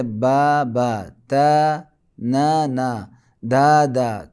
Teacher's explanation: اور زبر کو 2 برابر کھینچنے سے الف مدہ وجود میں آتا ہے. الف مدہ کی آواز زبر کی آواز سے تھوڑا زیادہ ہے. زبر کا 2 گنا یا 2 برابر کھینچنے سے الف مدہ وجود میں آتا ہے، اور اس کی آواز آ سے شباہت، جیسے آدم، آم، اس کی آواز سے شباہت رکھتی ہے.